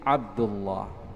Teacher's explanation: baca teballah lam yang terdapat pada nama Allah Subhanahu wa taala ketika didahului fathah atau dhamma